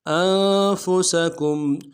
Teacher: ساکن کے ساتھ ملانا ہے، نون ساکن میں غنہ کریں گے، فا کو نرم سے ادا کریں گے، سین کی سیٹی باریک ہوگی